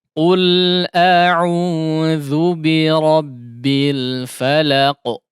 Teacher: Jangan dibelokkan ke khayshum. A'udzu kemudian huruf dzalnya ditipiskan ya.